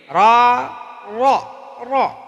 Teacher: را پر زبر ہے تو را کو پر پڑھیں گے، معروف بھی پڑھیں گے، پر پڑھیں گے.